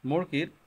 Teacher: মুরগির ম টা ঠোঁট থেকে উচ্চারিত সেজন্য এটা অষ্ঠ ব্যঞ্জন দয় বিন্দুর র দাঁতের গোড়ার পরে মূর্ধ থেকে উচ্চারিত সেজন্য সেটা